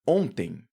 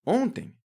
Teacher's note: Esse O ele tem um som nasal e esse N ele não aparece como N, como o N de navio.